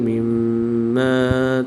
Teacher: میم مشدد میں غنہ آنی کر کے پڑھیں گے